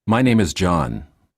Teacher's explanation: Falling intonation. Lower your voice at the end of the sentence. Falling intonation is used in statements, sentences that are not questions.